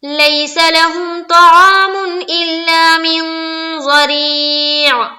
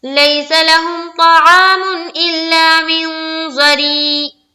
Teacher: عین حلق سے سمجھ میں آنی چاہیے